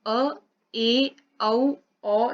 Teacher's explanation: अर्ध विवृत में क्या होता है, मुख द्वार आधा खुलता है